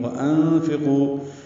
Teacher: نون ساکن کے بعد فا کی وجہ سے اخفا ہے